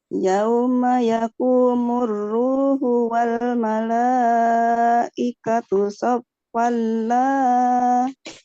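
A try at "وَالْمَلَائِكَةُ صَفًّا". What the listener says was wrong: Saffala. Agak tinggi lagi sedikit. Lepas, Bu. Lepaskan.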